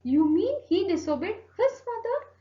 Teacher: so here i'm stressing out his mother